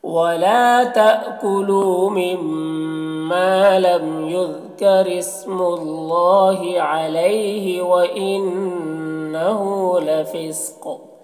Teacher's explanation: علیہ میں یالین سے نرم آواز کے ساتھ جلد پڑھیں گے۔ وَإِنَّهُ نون مشدد غنہ کے ساتھ پڑھیں گے، ہو میں الٹا پیش ہے، اسے ایک الف برابر کھینچیں گے۔